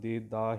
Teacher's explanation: ਹਾਂ ਸਾਧ ਸੰਗਤ, ਇਹਨੂੰ ਦੇ ਦਾ ਹੀ ਕਹਿਣਾ ਹੈ, ਦੇਂਦਾ ਬਿੰਦੀ ਲਾ ਕੇ ਨਹੀਂ ਪੜ੍ਹਨਾ, ਜਿਵੇਂ ਲਿਖਿਆ ਇਸੇ ਤਰ੍ਹਾਂ ਹੀ ਬੋਲਿਓ